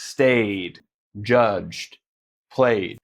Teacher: And if a word ends with a stronger sound that uses our throat and vocal cords, we don't want to take the time to turn it off. We'll just add a D sound that also uses our vocal cords